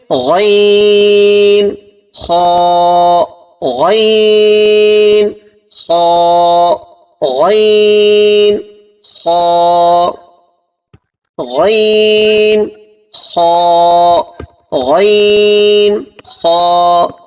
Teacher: آخر حلق سے غین خا ادا ہوتے ہیں